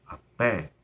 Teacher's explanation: Então esse até tem que ter um acento. A sílaba mais forte é a última, é uma oxítona, e é terminada em E.